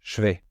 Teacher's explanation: la prononciation du je se transforme un peu en che